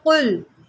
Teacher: क़ाफ जो है इसको हम मोटा करके पढ़ते हैं, हरूफ मुस्तआलिया में से है। इसको आप कुल नहीं पढ़ेंगे, इसको आप पढ़ेंगे कुल।